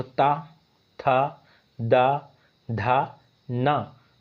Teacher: आपके ऊपर के दांतों पर जो है जीभ टच कर रही है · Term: दंत्य